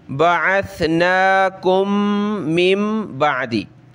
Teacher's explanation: अब मीम मीम एक जैसे हरफ आ गए तो एक ही मीम पढ़ेंगे और नाक में आवाज़ पैदा करेंगे, और ये नून साकिन है, इसके बाद बा है तो यहाँ हमने मीम पढ़नी है छोटी, ठीक है।